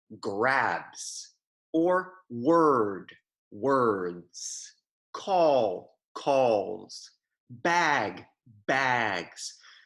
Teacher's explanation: when the last sound of a word is voiced that s at the end is going to sound like a Z